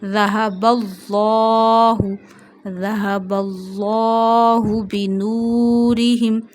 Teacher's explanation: Read lam of Allah with the thick voice.